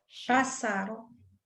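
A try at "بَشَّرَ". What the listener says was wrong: Huruf A bukan huruf O.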